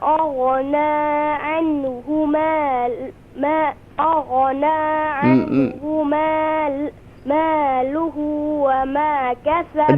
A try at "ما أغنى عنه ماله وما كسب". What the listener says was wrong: Do mad here. ما أغنى. ما make long.